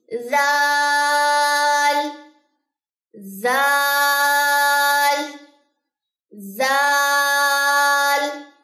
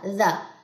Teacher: بہت نرم ادا کرنا، اس کو کبھی بھی اس میں سیٹی کی آواز نہیں آنی چاہیے، زال زال نہیں، زا زا اوپر والے جو دو دانت ہیں ان کو جو ہے وہ زبان کی نوک لگے گی.